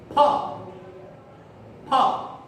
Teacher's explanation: फा में होंठ चिपकेगा लेकिन वायु बाहर निकलेगी, फा फा और वायु बाहर निकलेगी।